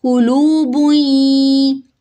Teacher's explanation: تنوین کے فوراً بعد یا آ رہا ہے تو ادغام مع الغنہ ہوگا